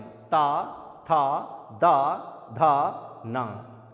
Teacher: जीभ पूरी तरह से कहां पर टकराती है? दांतों में टकराती है।